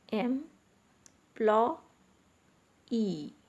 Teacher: employee into syllables m plot e okay so m plot e it consists of three syllables and the stress is on the last syllable that is y e e okay now look at another word